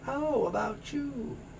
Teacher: The W moves over to the A.